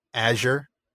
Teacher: what Tolken calls a z sound which is basically a voiced sh